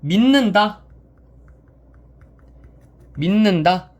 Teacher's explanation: 종성에 있는 디귿이 뒤에이 초성에 나오는 니은의 영향을 받아 비음인 니은이 되는 현상입니다.